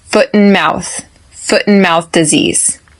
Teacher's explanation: I do not pronounce that T at the end of foot